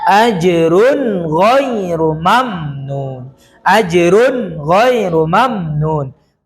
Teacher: Maka idhar di sini adalah ra berharokat tanwin bertemu dengan ghain. Jadi dibaca jelas.